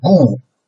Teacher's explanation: Okay, the first one, 雾 is a fourth tone, right? From a rather high beginning point and then suddenly lower down